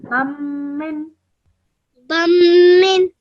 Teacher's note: Remember not to produce the tanween sound, okay? So don't say bun min. You're straight away joining the ba to the meme.